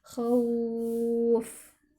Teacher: Jadi kita harus berikan sifat fa-nya, ada angin yang keluar ketika melafadzkan huruf fa.